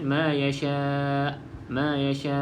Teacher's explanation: pastikan kita bunyikan Hamzah di akhir ni di akhir perkataan ni Hamzah ni ada tapi kita nak matikan kita mati tu kita